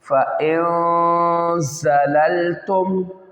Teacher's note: इसमें गुन्ना करना है इख्फ़ा का, और ज़ा में सिटी निकालनी, यहाँ पे देखें डबल लाम है, इन दोनों को मिला देना, फ़इन ज़ललतुम।